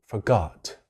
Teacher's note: forgot嘅第一音節要放輕啲讀